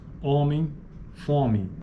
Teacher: formas como homem fome apresenta tipicamente uma vogal nasal na maioria dos dialetos do português